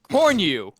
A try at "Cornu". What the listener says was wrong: It's not you. There's no Y. Cornu. Cornu. Like a new pair of shoes.